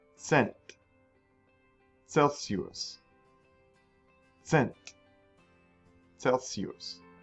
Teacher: C is not used much by itself in German, okay, but it makes the ts sound just like the Z.